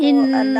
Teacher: ان اللہ کے اللہ لام کو موٹا کرے